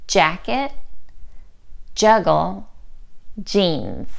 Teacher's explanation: You should feel a vibration when you make this sound because J is a voiced sound.